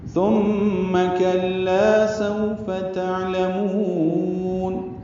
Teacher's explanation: میم مشدد پہ غنہ ہوگا